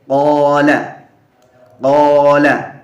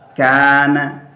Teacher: alifnya sehingga dibaca tebal karena mengikuti huruf qaf, di mana qaf dibaca tebal